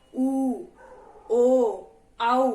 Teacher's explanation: तो इसमें क्या बन रहा है, हमारे होंठ क्या हो रहे हैं, सर्कल में जा रहे हैं। ठीक है, यानी कि वृत्त बन रहा है, तो इसीलिए इसका नाम क्या रख दिया है, वृत्ताकार रख दिया है।